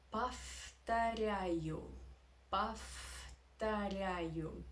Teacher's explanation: The v sound, the v letter is not in the end of the word. Yeah, but after v goes t, and t is not voiced. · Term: devoicing